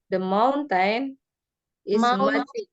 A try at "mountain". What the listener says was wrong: Mountain, bukan mount. Mountain.